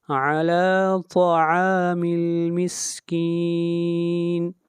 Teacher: طا بھی حروف مستعلیہ میں سے ہے، اس کو موٹا پڑھیں گے